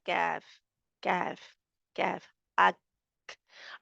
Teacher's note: और ये देखिए, नरम तालु और सख्त तालु जहाँ से शुरू हो रहा है, नरम तालु के आखिर में और सख्त तालु के शुरू में, जहाँ पे जाके हमारी ज़ुबान की जड़ जो है वो ऊपर उठती है और जहाँ पे जाके लगती है।